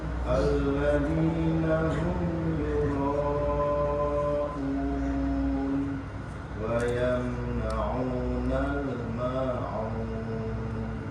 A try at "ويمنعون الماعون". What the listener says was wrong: Baik, bainiyah Pak, bainiyah. Mengalir sedikit, tidak tertahan. Catatannya sama dengan Pak Zul, lebih diperdalam lagi dalam mengucapkan ain. Ain itu di mana? Tengah, tenggorokan. Jangan dibaca nah. Gak usah ada kata n-nya. Tapi langsung itu. Tapi diperdalam lagi.